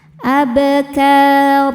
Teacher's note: Cara bacanya dipanjangkan dua harakat tanpa menyisakan bunyi n. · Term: mad iwad